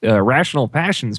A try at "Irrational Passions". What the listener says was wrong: it definitely sounds like you said rational passions.